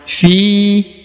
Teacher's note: huruf ru harus dipanjangkan dua harakat faakar faakaru ya kemudian fiha huruf Fi dibaca Dua harakat ya karena di depannya terdapat ya sukun atau ya mati Fi kemudian ini huruf ha ya perhatikan ini huruf ha di